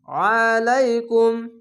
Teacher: আইনটিকে মোটা করে গলা চিপ বলবেন